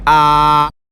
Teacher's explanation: tone 1, high and flat